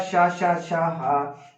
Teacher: शा हा, जो ऊष्म व्यंजन होते हैं वो भी कैसे होते हैं मेरे साथियों, वो भी महाप्राण होते हैं